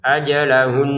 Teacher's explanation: Untuk ajalahun kita berhenti di sini mengikuti yang sebelumnya ya. Kalaupun berhenti tetap harus ada dengungannya.